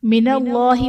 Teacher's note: من اللہ میں اسم جلالت اللہ عز و جل کے لام سے پہلے حرف پر زبر ہے تو یہاں پر اسم جلالت اللہ عز و جل کا لام پر یعنی موٹا پڑھا جائے گا۔